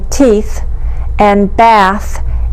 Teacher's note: With our tongue between our teeth, we make the fricatives, th